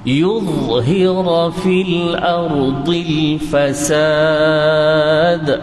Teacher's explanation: Kalau yuz itu tak cukup. Yudhhira tebalnya dha itu, hujung lidah dan hujung gigi bertemu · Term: kaedah dha